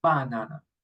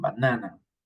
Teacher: In one, the emphasis is in the first letter, banana. The other is in the second, banana.